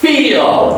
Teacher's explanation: It's a fricative, it's unvoiced.